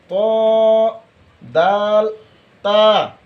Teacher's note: পিঠ তার বরাবর উপরের তালুর সঙ্গে লাগাইয়া র 11 নাম্বার মাখরাজ যেহেবার আগা সামনের উপরের দুই দাঁতের ঘোড়ার সঙ্গে লাগাইয়া